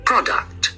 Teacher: Products is read on the first syllable